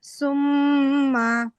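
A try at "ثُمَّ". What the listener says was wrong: আচ্ছা, সুম্মার সা কিন্তু সুন্দর হয়নি, সুম্মা।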